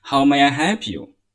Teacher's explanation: usually it would take a normal tone it's going down